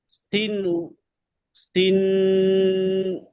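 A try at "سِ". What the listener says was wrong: সিন টান দিয়ে বলেন, সিন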